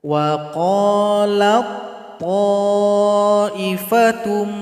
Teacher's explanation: Wa qalat to itu salah. Jadi ta dihilangkan saja karena dia telah masuk kepada huruf to.